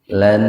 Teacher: Nun mati bertemu dengan nun yang pertama diidghamkan ya, dimasukkan ke nun yang kedua dengan mendengung. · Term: idgham bi gunnah